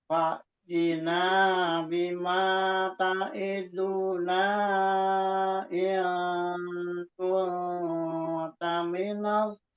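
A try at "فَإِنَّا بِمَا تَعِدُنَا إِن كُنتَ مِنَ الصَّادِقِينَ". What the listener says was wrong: Namun sayang kadang-kadang tuh mat-matnya itu masih sering ada yang berlebih masih sering di situ.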